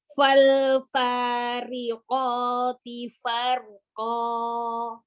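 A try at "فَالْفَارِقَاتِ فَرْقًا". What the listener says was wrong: Tipiskan lagi huruf ta-nya, ti, qoti. Fal jangan dihentak. Fal Ya, ko temukan aja makhrajnya lalu keluarkan harokatnya. Fal fariqati farqa.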